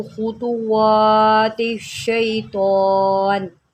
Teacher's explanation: یہ طا ہے اور اس کے اوپر کھڑا زبر، ہم اس کو ایک الف کھینچ کے پڑھیں گے۔ دوسرا، آپ نے اس کو تا کی طرح نہیں پڑھنا، جیسے کہ اکثر غلطی پائی جاتی ہے۔